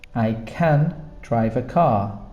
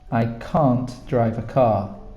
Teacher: It's a longer sound on the negative.